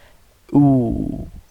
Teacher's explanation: waw is pronounced with the incomplete touching of the lips when the lips are rounded. Okay, so you make your lips round.